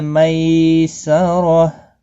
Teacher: می یالین ہے، تھوڑا نرمی کے ساتھ کھینچ کر ادا کریں گے۔ اور زبر کی وجہ سے پر پڑا جائے گا، اور وقف کی صورت میں یہاں پر غولتا ہا ساکن پڑھیں گے۔